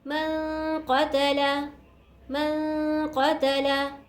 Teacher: नून साकिन के बाद क़ाफ है, क़ाफ उर्फ़ इख़फ़ा में से नून साकिन पर इख़फ़ा होगा